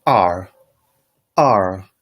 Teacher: r is a falling tone